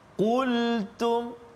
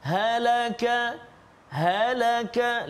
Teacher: Pangkal lidah kan, belakang lidah dekat dengan anak tekak. Kaf depan dia. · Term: qaf